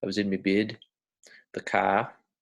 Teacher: bed shifts kind of in the mouth the vowel sound sounds a little bit more like bid